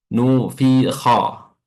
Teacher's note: nu adalah mulut dimonyongkan ke depan pada dhammah nu, lalu kasrah atau fi di sini mulut diringiskan ke samping kiri kanan fi, lalu kha fathah mulut dibuka, ya, dibuka, yang bibir atas ke atas, yang bibir bawah ke bawah.